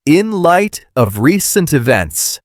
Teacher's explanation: The t in light almost disappears. It flows into the of inlight.